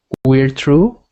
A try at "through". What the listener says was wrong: Not true. Right now, you sound like you're saying this. It sounds like you're saying true. You want it to sound like the same word, but change the T to a TH, like this. Through.